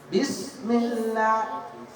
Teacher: Ba itu enggak panjang. Kamu jangan ngasih iya setelah huruf ba, itu enggak ada.